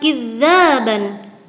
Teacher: Kemudian lafaz kidzaban terdapat bacaan mad iwad sebab ada harokat fathatain yang dibaca panjang satu alif karena waqaf